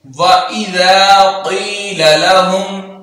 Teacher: ذال میں سٹی نہیں ہونی چاہیے